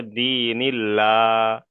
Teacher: আল্লাহ শব্দের পূর্বে যদি জের আসে তাহলে আল্লাহ শব্দটাকে বারিক করে পড়তে হবে, অর্থাৎ লা করে পড়তে হবে। তাহলে এখানে পড়তে হবে কি, এখানে কিন্তু আর ল পড়া যাবে না, এখানে পড়তে হবে দীনিল্লাহ।